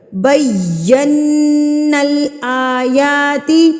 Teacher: نون مشدد اور میم مشدد پر غنہ کیا جاتا ہے، یعنی کہ نون کی آواز کو ناک میں ٹھہرایا جاتا ہے ایک حرکت کے برابر یا 1 سیکنڈ یا ایک الف کے برابر۔